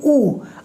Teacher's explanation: जैसे ऊ, आप बोल के देखिए ऊ, आपके होठ बिल्कुल गोल हो जाते हैं। तो ऊ के उच्चारण में होठ आपका सक्रिय हो रहा है। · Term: ओष्ठ वर्ण